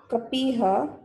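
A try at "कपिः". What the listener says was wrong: Kapihi, not kapiha. Kapi ends with short vowel E.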